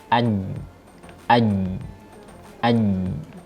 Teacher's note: bagian tengah lidah menempel atau diarahkan kepada langit-langit mulut bagian tengah. Jadi lidah tengah kita persis diangkat ke bagian atasnya, ke langit-langit yang persis di atas tengah lidah. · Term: huruf jim